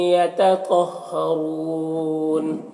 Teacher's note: را کے اوپر پیش ہے، را کو پر پڑھیں گے. وقف کی صورت میں مد عارض وقفی ہوگا، تو اس طرح سے پڑھیں گے.